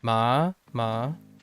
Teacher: the second tone is similar to how we ask a question in English your voice raises in Pitch